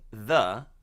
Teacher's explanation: a very common word that begins with the voiced TH consonant